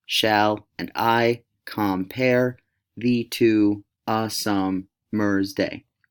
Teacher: the first syllable is unaccented, the second is accented in a Shakespearean line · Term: iamb